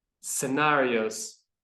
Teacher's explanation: I would say that that end scenarios is a z sound rather than a s